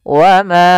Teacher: Sehingga ma kita panjangkan dulu empat harakat atau lima harakat untuk kadar mad jaiz. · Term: mad jaiz munfasil